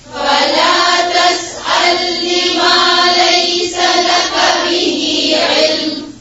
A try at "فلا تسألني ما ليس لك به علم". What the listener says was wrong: तस्अलनी और लका लंबा नहीं खींचे, फिर से पढ़े फला ما ليس لك به علم إني أعظك أن تكون من الجاهلين قال رب إني أعوذ